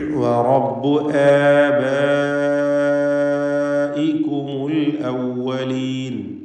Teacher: മദ്ദ് മുത്തസിൽ 4-5 ഹറക്കത്തിൻ്റെ അളവിൽ നിർബന്ധമായും ദീർഘിപ്പിക്കുക.